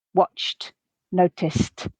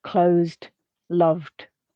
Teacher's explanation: the first two were pronounced t, watched, noticed, and the second two d, closed, loved